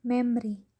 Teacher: when we read memory, the letter O is not pronounced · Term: segment dropping